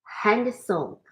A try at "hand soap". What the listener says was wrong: There's no A between hand and soap. The D is almost silent. You can barely hear it. Yeah, the D's there, but you're not really pronouncing it. Okay, when you speak, when it's in a sentence, hand soap.